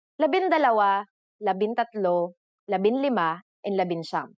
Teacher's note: For the letters D, L, R, S, and T, the G from NG is dropped to make it easier to pronounce